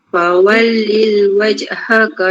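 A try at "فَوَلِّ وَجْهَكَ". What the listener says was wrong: Tak yang lil kan? Li je. Fawalli wajh. Terus.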